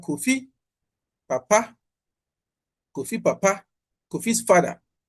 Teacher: This is a typical automatic downstep where the low tone causing the downstep is evident